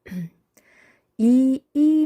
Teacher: 이 모음 하면 이 하니까 혀가 끝이 앞이 올라가죠. 그래서 혀의 최고점이 앞쪽에 있기 때문에 전설 모음이고, 혀의 높낮이는 혀와 입천장의 거리가 가깝기 때문에 고모음이고, 입술이 펴지기 때문에 평순 모음입니다.